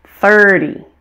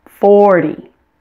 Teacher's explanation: the numbers ending in zero are stressed on the first syllable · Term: number stress